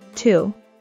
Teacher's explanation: うーは日本語のうよりももっと唇を突き出して言います